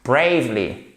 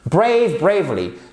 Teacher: Vous avez votre accent tonique ici et vous prononcez comme un A, comme dans day.